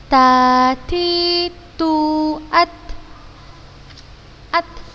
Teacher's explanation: Dia hamas, jadi seperti ada udara yang mengalir ketika kita membaca tak sukun hurufnya.